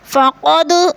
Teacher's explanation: دال ساکن ہے، قلقلہ کریں گے